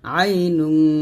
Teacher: আইন জবর আই নুন দুই পেশ নুং, তানবিনের পর জিম আসছে, ইকফার হরফ গুণনা হবে